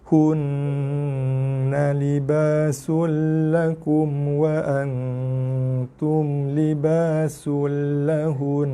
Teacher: Na dah tak bunyi sebab kita dah matikan nun tu kerana wakaf. Tapi dengung tetap wajib kita kekalkan bacaannya.